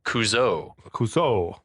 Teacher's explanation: the decision had been made at some point to Accent the final vowel